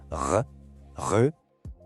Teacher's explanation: Pensa no som de um gargarejo, mas bem suave, quase sem água. Esse atrito levinho que a gente sente lá na garganta é exatamente o ponto de partida para o R francês.